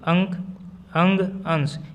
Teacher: अनुस्वार के उच्चारण में नाक से अधिक सांस निकलती है और मुख से कम।